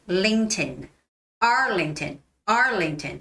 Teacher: For L, your tip of your tongue, the tip of the tongue has to touch the two big teeth from the back.